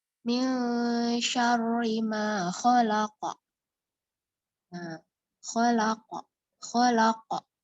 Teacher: khalaqa lebih jelas qalqalahnya, memantulnya lebih jelas. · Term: qalqalah kubro